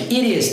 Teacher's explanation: tem um som de R porque o T está entre vogais